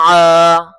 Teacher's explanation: گلے سے زور لگا کے عین نکالیں